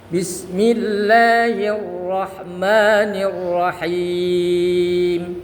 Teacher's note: Bismillahir, ra-nya tebal, tafkhim.